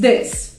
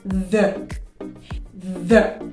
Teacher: the th has two different sounds in english one is this and the other has a vibration like the the